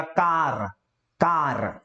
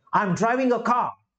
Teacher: बट यहीं पे जो ब्रिटिश इंग्लिश होंगे वो लोग ये आर को प्रोनाउंस नहीं करेंगे, मतलब का, आई एम ड्राइविंग अ कार, वो कार ऐसा नहीं बोलेंगे, आई एम ड्राइविंग अ कार, का बस इतना ही सुनाई देगा, बा।